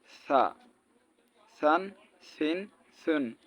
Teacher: জিহুব্বার আগা সামনের উপরের দাঁতের আগার সঙ্গে লাগায়া দেখেন নরম করে